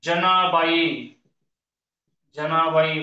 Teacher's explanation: जीभ दाताबरोबरच टाळूला लागाय त्याला दंत तालव्य म्हणायचं · जनाबाई शब्दातल्या ज चा उच्चार करताना जीभ टाळू बरोबर दाता लागते, म्हणून हा शब्द जो आहे त्यातला ज हा दंत तालव्य, दंत तालव्य.